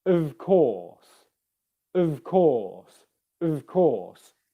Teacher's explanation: make sure that your bottom lip is vibrating against your top teeth